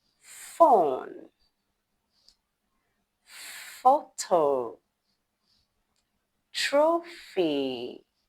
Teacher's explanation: You make the F sound by placing your top teeth on your bottom lip and rolling out her gently like this.